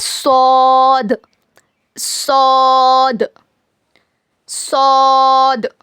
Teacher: जबान की नोक को नीचे के 2 दांतों के जड़ में लगाने से होता है. It is pronounced when द tip of your tongue touch द roots of your 2 bottom teeths.